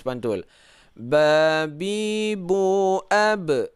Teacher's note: Karena ba ini hukumnya qalqalah, harus pantul. Babi bu ab, ada pantul.